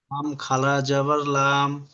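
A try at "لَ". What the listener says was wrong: লাম খাড়া জাবার, জি জি, একটু একটু রোকেন, লাম খাড়া জাবার লাম হবে না, লাম খাড়া জাবার লা। লা। জের না, লামের উপরে জাবার আছে, উপরে থাকলে জাবার, নিচে থাকলে জের। লাম খাড়া জাবার লা।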